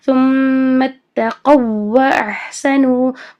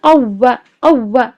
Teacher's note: ان کی لین نہیں بنانی ہے بلکہ واو کا واو میں ادغام کرنا ہے